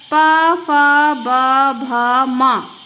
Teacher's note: इनके उच्चारण में हमारे होठ एक दूसरे को स्पर्श करते हैं।